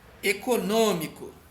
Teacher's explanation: o acento circunflexo, aquele chapeuzinho em cima do O, ele diz que aquele som ali vai ser um som mais fechado